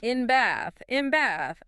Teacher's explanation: Because the M sound uses your lips. And it's getting you ready for the B sound in bath, which also uses your lips.